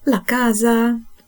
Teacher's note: слово в якій буква С одна та ще й стоїть між голосними і звучить дзвінко